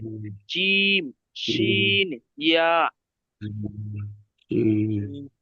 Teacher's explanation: জিভের মাঝখান সেই বরাবর উপরের তালু, একদম জিভের মধ্যখানটা উপরের তালুর সঙ্গে লাগিয়ে উচ্চারিত হবে জিম, শিন, ইয়া